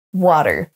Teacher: A comme un A français avec la bouche bien ouverte, mais wa.